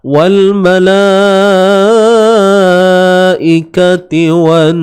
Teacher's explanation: nun ni kena dengungkan dua harakat sebab dia bersabdu wajibul gunnah